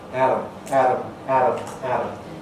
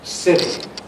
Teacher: The alveolar contact is speeded up, making it into a kind of tap, almost like the R sound of some languages. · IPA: [ˈæɾəm]